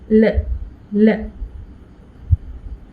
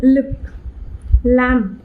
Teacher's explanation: the tongue is held in a lower position so that there is enough space at the sides of the mouth for the air to escape freely. So L, L, lateral sound, lateral consonant L.